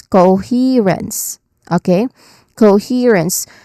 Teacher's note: Here being the I mean, he being the stressed syllable here. So the middle sound is our stressed syllable for the word.